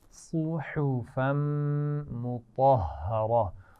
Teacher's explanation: صاد کے مخرج کا خیال رہے، آواز موٹی ہے، اس کے بعد ہا ہے اور یہ باریک آواز ہے